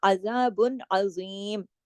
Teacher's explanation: आगे देखिए वलहुम अजाबुन अजीम, अजाबुन अलिफ की तरह नहीं, आइन की तरह, अजाबुन, अजाबुन अजीम। इसके अजीम का जो ज़ा है इसको मोटा पढ़ा जाएगा